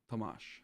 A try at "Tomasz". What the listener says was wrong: No, you're pronouncing the second syllable. I think you pronounce like focus on the first one. Tomasz. No, you say Tomasz. You say Tomasz.